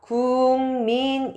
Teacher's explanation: 기억이 요렇게 이응으로 바뀝니다 그러면서 발음이 요렇게 발음이 되거든요 그래서 궁민 요렇게 발음이 됩니다 자